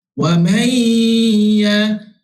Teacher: lepas kita sebut huruf nun mati itu terus masuk ke huruf ya. Okey, seolah-olahnya kita nak sebut terus huruf ya. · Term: idgham ma'al gunnah